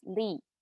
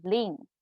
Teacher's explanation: if you would like to say you in singular form it's li and then when it's nasalized so lean in plural forms